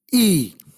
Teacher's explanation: During the articulation of long E vowel, the front of the tongue is raised in the direction of the hard palate to a position almost near close. It can be described as a front, close, unrounded vowel.